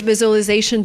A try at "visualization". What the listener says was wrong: I cannot say a great visualization tool. The word is pronounced differently. We don't say visualization. We say visualization. So it's not the z sound like zebra, it's the j sound like usual, visual. We have the long oo sound plus the o. So we have the w sound in the middle linking the vowels.